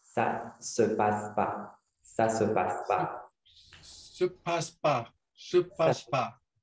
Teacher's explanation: because the ne disappeared